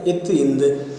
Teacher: நுனி நாவும் பல்லும் இணைவதால் எழும் ஒளிகள் நுனினா பல்லொளிகள் என்று கூறுவர்